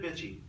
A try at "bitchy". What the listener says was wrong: More emphasis on the first syllable.